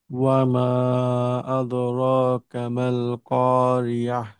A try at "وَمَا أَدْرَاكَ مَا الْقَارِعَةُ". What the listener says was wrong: কামাল না, ওয়ামা আদরাকা মাল কারিআ। কা আলাদা, মা আলাদা। কায়ের মধ্যে গিয়ে একটু হালকা, মানে ভেঙ্গে, মাল কারিআ। হ্যাঁ, নিঃশ্বাস আমার চালু থাকবে, কিন্তু একটু ভাঙতে হবে।